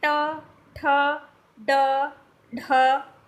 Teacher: जीभ आपके दांत के ऊपर वाले हिस्से को टच करती है, उसे मूर्धा बोलते हैं।